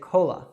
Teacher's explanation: that last A is actually a schwa sound, which is one of the most common sounds in American English